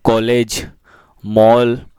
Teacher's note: औ यह अंग्रेजी भाषा से लिया गया है और इसका उच्चारण आ से ओ के बीच होता है। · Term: आगत स्वर